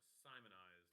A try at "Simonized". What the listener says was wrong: Just be careful, because it almost sounded like you said you wanted it sodomized, and I was